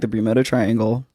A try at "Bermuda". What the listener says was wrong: The what triangle? It sounded funny when you said the first time. I think you're putting the wrong emphasis on the syllables.